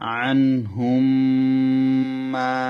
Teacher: এখানে মিমটা মিমের মধ্যে প্রবেশ করে যাবে, কারণ মিম সাকিনের পরে যদি মিম আসে তখন প্রথম মিম দ্বিতীয় মিমের মধ্যে প্রবেশ করে যাবে এবং গুন্নার সহিত পড়তে হবে। এভাবে গুন্নার সহিত পড়াটাকে ইদগামে সফবি বলে।